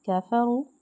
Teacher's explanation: واو ساکن سے پہلے پیش ہے اس کو ہم نے ایک الف اور 2 حرکات کے برابر کھینچنا ہے